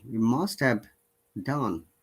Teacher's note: the weak function words he him his hair have had and has all tend to lose the h if the word doesn't appear at the beginning